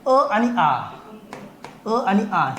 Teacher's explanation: अ आणि आ च उच्चार स्थान एकच असणार आहे अ आ म्हटलं काय किंवा आ अ म्हटलं काय दोन्ही एकच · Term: सजाती स्वरांची एक जोडी